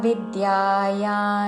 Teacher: విద్యాయా వి మీద ఆఘాత